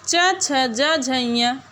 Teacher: ये 5 व्यंजन तालु से बोले जाने के कारण तालव्य वर्ण कहे जाते हैं।